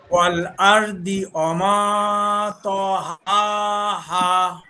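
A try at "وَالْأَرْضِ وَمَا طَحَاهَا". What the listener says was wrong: এখানে র পুর হবে, ওয়াল র মোটা আর ওয়াল আর মোটা হবে, ওয়াল আরদি বি মোটা হবে। আমরা যদি স্বাভাবিকভাবে বলে ফেলি ই, তাহলে একেবারে স্পষ্ট তাল হয়ে যায়।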